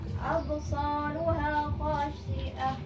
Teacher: Ringan. Ya, qalqalah sughra ini dibaca ringan